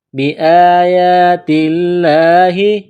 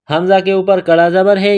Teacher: یا کے اوپر کڑا زبر ہے، ایک الف کے برابر کھینچنا ہے